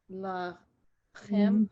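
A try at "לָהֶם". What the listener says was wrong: Right, that's the breathy one, lahem. Because in Hebrew, if you say lachem and lahem, it has different meanings. So this is lahem.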